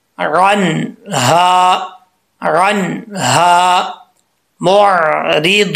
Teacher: नून में कलकला नहीं करना, यहाँ नून साकिन है तो कलकला नहीं करना, अगर कलकला करेंगे तो गलत हो जाए, मिस्टेक हो जाएगी, ऐसा नहीं करना।